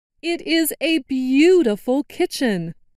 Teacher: And I noticed that stressed the word beautiful.